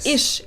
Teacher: in some regional german accents people actually do pronounce it ish